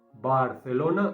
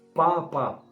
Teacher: Tú te pones la mano delante de la boca y cuando digas B, Barcelona, no hay aire. Pero cuando digas la P, tienes que notar aire.